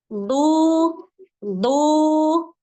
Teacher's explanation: pada huruf Dod dia makhrajnya ada di hafatul lisan bukan di ujung lisan Maka jangan sampai dia membaca seperti Huruf Dal yang ditebalkan tuh